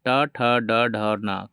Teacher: पूरा टवर्ग ट ठ ड ढ और न का उच्चारण स्थान मूर्धा है